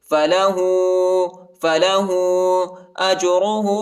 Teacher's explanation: ہاں پر الٹا پیش اور چھوٹا مد آیا ہے، اس کو 2-3 سیکنڈ تک کھینچیں گے